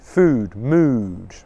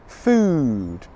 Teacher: Well, first of all, it's a long vowel sound in English. Can you see my lips? They're in the rounded position again. And the lips almost become tighter as I make the sound. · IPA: /uː/